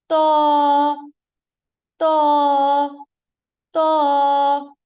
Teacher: زبان کا پچھلا حصہ تالو کی طرف بلند ہوگا تاکہ آواز موٹی ہو جائے. · زبان کی نوک سامنے والے دو دانتوں کی جڑ سے لگے گی. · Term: لیٹر تو